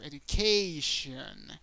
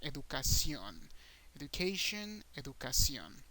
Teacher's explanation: The A is the strongest sound, but once again, in Spanish, the O is the strongest sound.